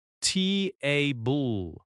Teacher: Strong first syllable, softer second syllable. Not tab bull.